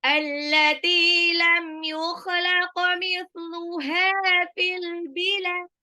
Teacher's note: Mithluha haknya mad tabi'i 2 harokat